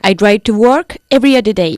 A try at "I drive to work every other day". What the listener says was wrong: Great. I'm glad you said I drive to work. We don't say I go to work by car.